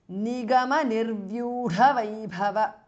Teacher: The dha and bha are mahapranah.